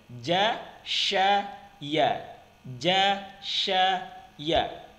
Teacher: Tempat keluarnya dari tengah-tengah lidah, bertemu dengan menepati langit-langit bagian atas